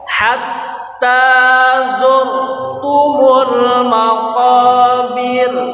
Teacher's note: za ada di ujung lidah ditempelkan di gigi seri bawah